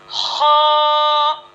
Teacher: हलक के ऊपर वाले हिस्से से हो अदा होता है